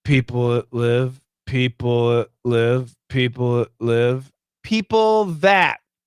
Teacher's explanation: the L is a strong sound. The TH, they run together. The TH disappeared, it's gone.